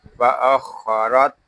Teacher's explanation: یہاں خا پر ہوگا، خا پر اس لیے ہے کہ خا حروف مستعلیہ میں سے ہے